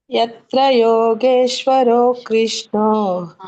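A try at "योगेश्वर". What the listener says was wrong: ಅಲ್ಲಿ ನೋಡಿ ರ ಇದೆನಾ ರೋ ಇದೆನಾ ಇಲ್ಲಿ? ಯೋಗೇಶ್ವರ ರೋ ಯಾಕೆ ಹೇಳ್ತಾ ಇದ್ರೆ ಮತ್ತೆ? ಯತ್ರ ಯೋಗೇಶ್ವರ ಕೃಷ್ಣ.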